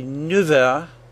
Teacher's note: it also changes when it comes before the word heure. Its F sound changed to a V sound, F a V. We say 9 heures.